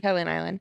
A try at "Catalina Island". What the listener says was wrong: Catalina. you say it all as one word. Slow down. Catalina Island. Catalina Island.